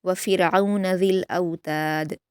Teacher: वफ़िरऔन में रा को बारीक पढ़ा जाएगा क्योंकि रा साकिन से पहले ज़ेर है · ता को बारीक पढ़ेंगे, दाल पर क़लक़ला करेंगे